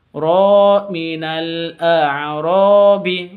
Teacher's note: ro panjang 2 harokat karena alif diawali dengan fathah.